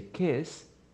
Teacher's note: if you say kiss in the present you don't have vibration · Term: no vibration